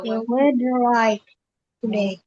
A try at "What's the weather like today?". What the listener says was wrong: Yes, pintar, intonasinya betul.